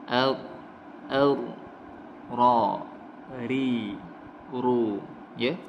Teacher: Getaran apabila dia dibaca tebal, getarannya hanya satu atau dua getaran saja.